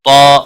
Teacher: طا حروف مستعلیہ میں سے پر پڑا جائے گا ، مستعلیہ کے بعد الف آیا ہے یہ بھی پر پڑا